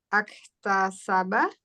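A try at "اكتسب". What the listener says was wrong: Nggak ada A. Nah, iktasaba. Iktasaba.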